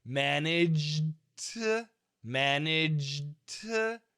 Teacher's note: So a little bit of D and a lot of T. However, this 20-80 rule, 20% D, 80% T, this can actually change by a lot.